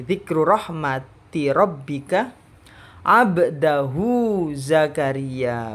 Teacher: Baknya tetap ada huruf qalqalah, bagian dari huruf qalqalah, meskipun kalau ditafsil ini qalqalah sughra, tapi tetap harus kelihatan mantulnya. Hu-nya matsilah ya dibaca seperti matobi'i karena tidak bertemu dengan hamzah di setelahnya.